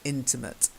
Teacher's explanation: So the stress on the first syllable, in, okay, intimate.